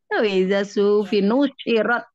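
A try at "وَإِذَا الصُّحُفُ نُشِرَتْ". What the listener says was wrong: Suhufu bukan suhufi. Suhufu.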